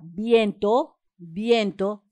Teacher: bien es la sílaba tónica porque suena más fuerte